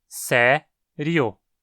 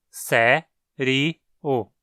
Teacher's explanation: No Brasil, consideramos que essa palavra tem apenas 2 sílabas, sé-rio. O i é tratado como uma semivogal aqui. Em Portugal, por outro lado, a palavra é considerada como tendo 3 sílabas, sé-ri-o.